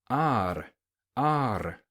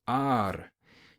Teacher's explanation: Your tongue contacts the roof of your mouth and blocks the air a little bit and then flaps out. That's how you get that D, R sound. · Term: flapped R